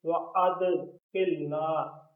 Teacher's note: ربنا بالسلام وَأَدْخِلْنَا وَأَد یہاں قلقلہ ہے. وَأَدْخِلْنَا دال پر قلقلے کا خیال رکھنا ہے